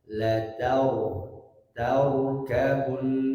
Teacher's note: ra sukun sebelumnya fathah, cara membacanya ditebalkan. La tarkabun, tidak tar.